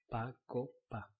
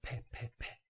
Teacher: in English you put some kind of an H after the P, so it's more like pe, pe.